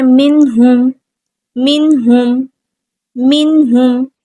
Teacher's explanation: نون ساکن، اس کے بعد ہا آ گیا، اظہار ہوگا، نون ساکن کی آواز کو ظاہر کریں گے